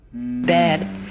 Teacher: It kind of goes, Bed. It's a little plateau and then a fall.